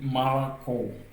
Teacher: un O non accentué dans un mot se lit comme un A.